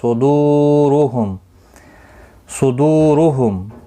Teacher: را پیش کی وجہ سے پر پڑھا جائے گا